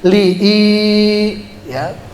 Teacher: Itu namanya mad asli. Panjangnya cuma 1 alif. 1 alif atau 2 harokat.